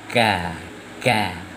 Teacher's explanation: Ini salah karena qaf di sini ke, makhrajnya di pangkal lidah agak sedikit ke depan